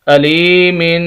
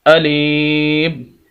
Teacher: اگر وقف کریں گے تو اس کی دو زیر ختم کر دیں گے، میم کو ساکن کر دیں گے، اور وقف کی حالت میں ہم اس کو پڑھیں گے علیم۔